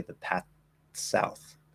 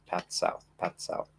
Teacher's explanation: there's that dental t replacement of the voiceless th